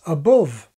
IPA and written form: əˈbʊv (above)